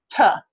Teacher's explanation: All right, so it's alveolar, and that means that the tongue tip or the tongue blade, we usually consider it an apical sound, pretty much using the tip, is making contact with that alveolar ridge during the closure portion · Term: voiceless alveolar plosive